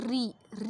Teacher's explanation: री जब आप बोलते हैं तो हल्का सा कंपन होता है ना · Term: मूर्धन्य